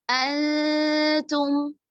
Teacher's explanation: نون کی آواز کو چھپا رہے ہیں، غنہ کا لحاظ رکھ رہے ہیں، اور آگے آنے والا حرف جو تا ہے جس میں ہم زبان کی نوک کا تھوڑا اوپری حصہ ثناء علیہ کی جڑوں پر لگاتے ہیں تو ادا ہوتا ہے، اس کے قریب لے جا کر اکفا کر رہے ہیں.